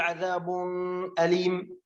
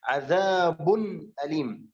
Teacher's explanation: فهنا لا نقول عذاب أليم، لا، إنما لابد أن أظهر التنوين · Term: حروف الإظهار